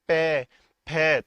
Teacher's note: जिनको बोलने में आपकी होठों को आपस में मिलना पड़े उनको क्या कहते हैं उनको कहते हैं ओष्ठ व्यंजन